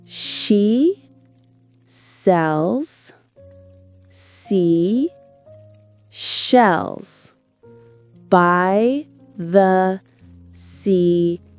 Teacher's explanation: The challenge here is moving from the sh sound in she to the s sound in cells.